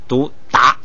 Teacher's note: 就是它调不变，还是2声，但是呢读成有这个鼻音的，前头带鼻音的达 。这是个特殊情况。最后那个说下家字瓦不影响发音，就不用管它了，只是这个区别单词用。但是它有一个什么这个就是那个，你看他说啊，在音译词中，就是音译它经常音译范文，可代表复元音娃中的乌，就是说如果在拼写范文的咒语的时候，译音的时候，如果下家字娃就读成韵母乌。你记这么个印象。咱们这个一开始学呀，读那个咒语还不多，先有这么个印象。下边的是这个后加字和再后加字。元音中也有乌啊。元音中有乌，但是它那个在范文转写的时候啊，它很复杂，不够用。元音那个乌。哎，它这个还不是元音的无。不是元音的无，它这个就是用